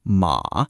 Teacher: It dips down low, then climbs back up like it's having an emotional breakdown. This is ma, horse. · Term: dipping tone